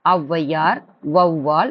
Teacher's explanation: வௌ அப்படின் போது 2 முறை நீங்க கை சொடுக்கு, அப்படி கை சொடுக்கிட்டாலும் 2 முறை நீங்க இடும்போது அந்த ஒவ் என்ற சத்தம் வந்துட்டு அந்த அளவுக்கு நீளும் அப்படின்னு சொல்றாங்க. ஆனால் ஔவையார், வௌவால் என சொற்களின் முதலில் வரும்பொழுது தனக்குரிய 2 மாத்திரை அளவில் இருந்து குறைந்து 1.5 மாத்திரை அளவில் ஒலிக்கிறது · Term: ஔகார குறுக்கம்